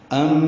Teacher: ام میں ادغام ناقص مع الغن